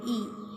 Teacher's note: unrounded, front, slightly retracted, half close, slightly raised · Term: short vowel E